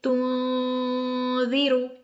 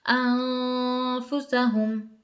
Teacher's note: زبان غنہ کرتے ہوئے زبان نیچے والے دانتوں کے پیچھے ہی رہے گی، اوپر نہ لگائیں ورنہ وہ نون مشدد کی طرح غنہ ہو جائے گا، ان والا غنہ ہو جائے گا. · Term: اخفا